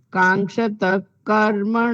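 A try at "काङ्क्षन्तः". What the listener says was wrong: ના, કાંક્ષંત નકાર છે, કાંક્ષંત. કર્મણામ સિદ્ધિમ. કાંક્ષંત. હા, ક આવે અથવા તો ખ આવે. કાંક્ષંત નકાર હજુ બોલવાનો રહી જાય છે.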